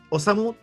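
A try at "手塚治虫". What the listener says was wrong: La pronunciación como japonesa no se pronuncia la U.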